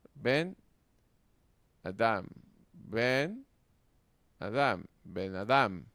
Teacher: la vocal cambia de cere larga a segol corta, según la regla tres mencionada anteriormente.